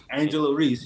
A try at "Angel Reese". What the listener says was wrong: Just Angel, not Angela. Angel.